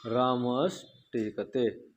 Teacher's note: विसर्ग के बाद क्या आ रहा है हमारा, टा वर्ग का वर्ड आ रहा है ना, टा आ रहा है, तो विसर्ग को क्या हो जाएगा, मूर्धन्य सा हो जाएगा